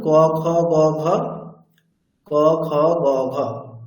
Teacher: অকার, কবর্গ, হকার এবং বিসর্গ, এগুলির উচ্চারণ স্থান হচ্ছে কণ্ঠ।